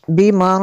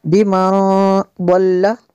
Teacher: نون ساکن کے بعد ضاد ہے تو یہاں پہ اخفا ہوگا اس لیے غنہ کیا